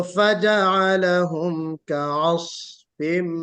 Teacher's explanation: स्वाद को भी निकाले, इस्तिला भी है, इतबाक भी है, और हल्की सी सीटी भी बजेगी। ज्यादा सीटी बजाएंगे तो सिफत इतबाक जो है कम हो जाएगी, इतबाक आप अदा नहीं कर पाएंगे, इस्तिला में भी कमी हो जाएगी।